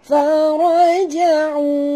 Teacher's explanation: فرجعوا را kena baca tebal